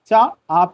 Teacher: चा का उच्चारण स्थान तालु से होता है